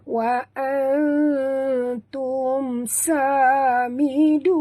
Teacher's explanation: Nun mati bertemu ta, sorok dan dengung, ikhfa hakiki, dengung dua harakat.